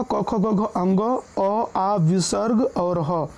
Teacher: ये कंठ से बोले जाते हैं, जिनके कारण इनको हम कंठ वर्ण बोलते हैं